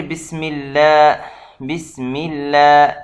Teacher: یہاں اللہ کا نام باریک ہے کیونکہ پیچھے سے زیر آ رہا ہے